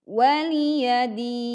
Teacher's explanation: bunyi nun sukun tidak hilang jadi kita masih menunaikan hak nun sukunnya · din panjang 2 4 sampai 6 harakat